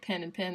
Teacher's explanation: in the South, we say pin and pin the same